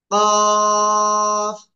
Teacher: জিপার গোড়া, তারপর আবার উপরে তালুর সাথে লাগিয়ে মোটা আওয়াজে আমরা 4 আলিফ টেনে পড়বো